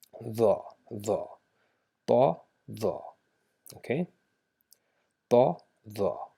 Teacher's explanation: instead of making it thal by open mouth, we just make our mouth shaped a little bit round, right? So rounded mouth, the, just like the, we do it the.